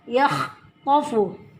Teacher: kha harus jelas keluar terdengar huruf kerongkongan. Yakhtafu, to tebal, tofu ab, fu bacanya pendek ya.